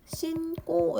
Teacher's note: 어미의 첫소리가 된 소리로 교체됐습니다